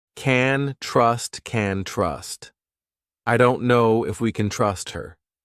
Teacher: you hear trust more because it's the main verb and can, which sounds like can is very short.